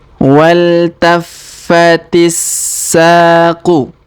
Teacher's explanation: Huruf ti langsung sambung ke huruf sa yang berharokat tasdid ya